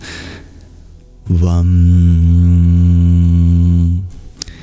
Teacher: It'd be more correct to say a W, but create a vibration in which it sounds like a V.